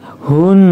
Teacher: Hun itu ditahan ya karena ini alif lam syamsiah di depannya ada Nun Nun maka ketika tasdid maka dia gunah atau mendengung